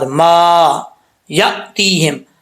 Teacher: الف ہے، اس کو لمبا کریں گے ایک الف کی مقدار